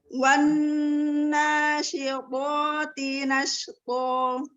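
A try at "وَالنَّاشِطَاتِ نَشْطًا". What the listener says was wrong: Longgarkan dikit lagi kemonyongannya agar tidak naber, agar tidak agar enggak gitu.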